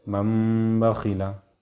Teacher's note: نون کو، نون ہے نا، تنوین و نون ساکن کے بعد نون کو میم سے بدل کر غنہ اور اخفا کے ساتھ پڑھیں گے۔ اس کو اقلاب کہتے ہیں۔